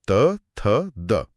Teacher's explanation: और फिर ये यात्रा और आगे बढ़ती है। जीभ अब दांतों को छूती है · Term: दंत्य